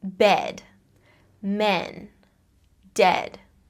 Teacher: your jaw is pretty neutral. It's not raised, you're not making a smiley sound like e, and it's not dropped like ah. It's just comfortably in the middle.